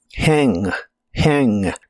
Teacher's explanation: hang la H suena como una J suave de español y la a se pronuncia con el sonido que es la combinación de e y a